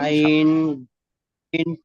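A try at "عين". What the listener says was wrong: হ্যাঁ, একটু টান দিয়ে বলেন, আইন, ওয়াইন। আইন, আইন মাঝখানে এলে আইনটা এরকম পরিবর্তন হয়ে যায়, ঠিক আছে।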